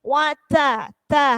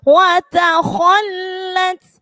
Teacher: hati-hati huruf taknya jangan sampai hambasnya hilang